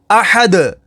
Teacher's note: آگے وقف احد, وقف تام کی وجہ سے دال کو ساکن کر دیں گے, دال حروف قلقلہ میں سے ہے تو یہاں پر قلقلہ ہوگا